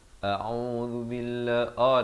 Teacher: A'udzu billahi, dengan di pangkal kerongkong, ain di pertengahan kerongkong 2 harakat